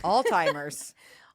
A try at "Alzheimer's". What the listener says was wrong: Alzheimer's? You say Alzheimer's? Like all-timers?